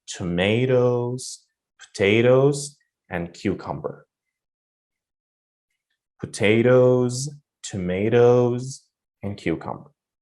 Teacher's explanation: before you finish the list, all the items of the list, your voice should go up. And the last item of the list, your voice should go down or should fall. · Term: intonation